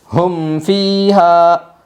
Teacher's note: میم ساکن کے بعد فا آئی ہے، اس لیے میم ساکن کو ظاہر کر کے پڑھے گے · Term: اظہار شفوی